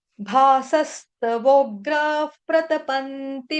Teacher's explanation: विसर्ग है उसका उच्चारण होगा आधा फ। क्यों? क्योंकि आगे प आ गया। ठीक है? प आया इसलिए यहां पर आ जाएगा।